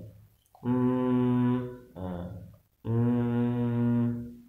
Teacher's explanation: merapatkan dua bibir dengan lama dan dengung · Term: Ikhfa Syafawi